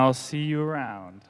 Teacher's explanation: notice how all the words in the phrase are linked together with no pause